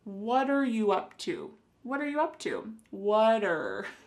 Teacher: here the word what and are creating a spoken contraction